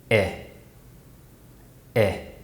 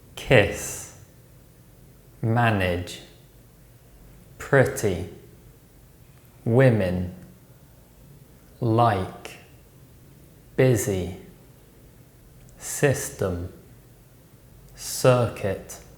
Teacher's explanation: technical name the near close near front unrounded vowel obviously in real conversation we don't produce the e sound first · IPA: /ɪ/